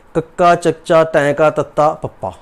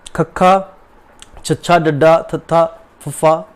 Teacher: ਜਿਹੜੇ ਵਿਅੰਜਨਾਂ ਦੇ ਉਚਾਰਨ ਦੇ ਸਮੇਂ ਜਿਹੜੀ ਸਾਹ ਹੁੰਦਾ ਹੈ ਉਹ ਜ਼ਿਆਦਾ ਮਾਤਰਾ ਵਿੱਚ ਬਾਹਰ ਨਿਕਲਦਾ ਹੈ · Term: ਮਹਾਪ੍ਰਾਣ